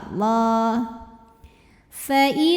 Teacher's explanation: Lam pada lafaz Allah atau lam jalalah dibunyikan secara tafkhim sebab huruf sebelumnya fathah, maka dibacanya tebal.